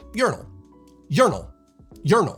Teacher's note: The second syllable sort of fades away, but the accent is on the first syllable.